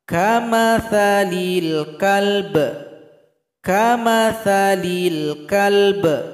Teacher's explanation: Cara berhenti di sini, ba disukunkan, berikan bunyi qalqalah.